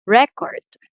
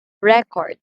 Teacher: louder pronunciation record so we're talking about the noun here record so the first syllable receives the first stress since it's a noun